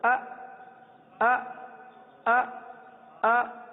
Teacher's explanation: حمزہ کی تحقیق، حمزہ شدت کے ساتھ ادا ہوتا ہے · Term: तहकीक